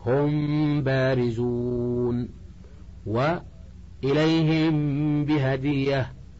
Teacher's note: الأول الإخفاء، وقد تقدم تعريفه، ويكون عند حرف واحد وهو الباء، وتصحبه مع ذلك الغنة، فإذا وقعت الميم الساكنة ووقع بعدها الباء أخفيت الميم، ويسمى إخفاء شفويا لخروج حرفه من الشفة